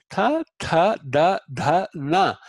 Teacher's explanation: The tongue goes against the tip of the top row of front teeth. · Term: dentals